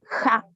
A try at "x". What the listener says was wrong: Ja. Raspa un poquito más. Como la J, pero raspando.